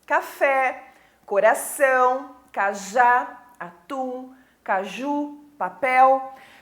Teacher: palavra né então aqui eu tenho todas as palavras oxítonas pois a sílaba mais forte é a sílaba tônica é a última sílaba